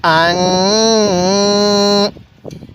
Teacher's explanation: এই নুনের মধ্যে আমরা নাকের বাসি দ্বারা গুন্নাহ করব।